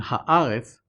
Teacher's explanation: the letter aleph in haaretz, which has always been non-guttural